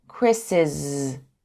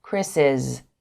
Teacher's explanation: We Print pronounce the apostrophe s we would say Chris but when we add the apostrophe s after a name that ends with s we say Chris's with a zed sound